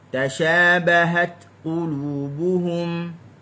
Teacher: Mesti sempurnakan syiddah dulu baru lepas hams. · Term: syiddah dan hams